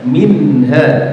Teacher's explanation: nun sukunnya dibaca jelas ya